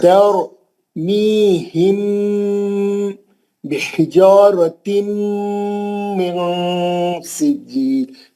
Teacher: نون کو چھپا کے اخفا کرنا ہے, غنہ کرنا ہے